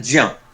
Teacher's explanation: ज्या में बड़ा आ, जिसको हम दीर्घ आ बोलेंगे, वो उसमें एडेड है